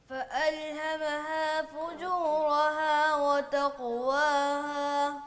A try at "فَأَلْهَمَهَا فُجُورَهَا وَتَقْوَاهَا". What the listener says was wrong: فا واضح نہیں نکالی آپ نے, فا واضح کریں. فألہمہا فجورہا. پہلی فا بھی درست کر کے نکالیں.